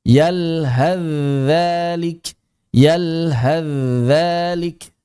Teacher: Cuma kalau kita ingin wasal maka kita membaca dengan idgham. T-nya tidak dibaca sama sekali 100% hilang langsung masuk ke dalam huruf zal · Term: masuknya sa ke dalam dzal